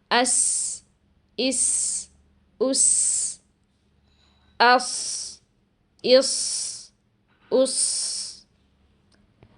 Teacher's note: مگر جب ہم سین اور صاد ادا کرتے ہیں تو زبان کی نوک کے اس آخری حصے کو پوری قوت کے ساتھ لگانے کی بجائے تھوڑا کمزوری کے ساتھ نیچے والے 2 دانتوں کی اندرونی سطح پر لگاتے ہیں اور ووکل کورڈز کھلے رہتے ہیں، جس کی وجہ سے یہاں سانس جاری رہنے کی آواز آتی ہے اور ساتھ ساتھ سیٹی کی آواز بھی سنائی دیتی ہے